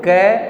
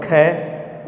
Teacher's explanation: कै में कम वायु लगी और ख इसमें ज़्यादा लगती है